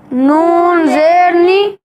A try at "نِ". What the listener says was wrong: جھٹکا نہیں لگائیں گے، نون زیر نی،